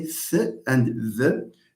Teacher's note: When you say th, you are placing the tongue between the upper teeth and the lower teeth.